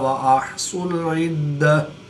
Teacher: دال مشدد ہے تو دال میں قلقلہ کبرا کر کے پڑھیں گے